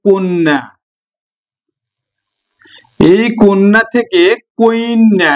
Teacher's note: কন্যা থেকে কুইন্যা একটা স্বরধ্বনি চলে আসলো।